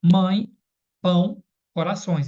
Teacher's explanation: o som é anasalizador, né? O som sai pelo o nariz.